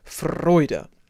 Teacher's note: Nice round diphthong. And a pretty strong rolled R.